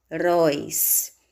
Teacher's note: Heróis. Sílaba mais forte, róis. Oxítona, terminada em ditongo aberto.